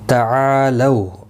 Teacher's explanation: تا کے اوپر کھڑی زبر ہے، 1 الف کی مقدار کے برابر کھینچ کر پڑھیں گے. تعالو، الف مدہ ہے، 1 الف کی مقدار کے برابر کھینچ کر پڑھیں گے. لو اولین ہے، تھوڑا نرمی کے ساتھ کھینچ کر ادا کریں گے.